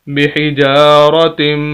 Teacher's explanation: मीम मुशद्दद है, शद वाला लफ्ज़ है। ता को हम मीम के साथ मिलाएंगे और गुन्ना भी करेंगे।